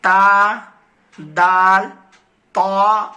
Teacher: سیرہ زبان اوپر کے سامنے والے دانتوں کے جڑ سے مل کر تا دال طا ادا ہوتے ہیں.